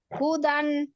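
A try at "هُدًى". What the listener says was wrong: কেন হুদান করছেন কেন? হুদা টান হবে না আপু? হুদা টান হবে কিনা? তাহলে টান দেন।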